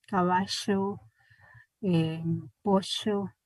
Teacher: el fricativo prepalatal sordo, el que utilizan, ya habíamos dicho, que utilizan los argentinos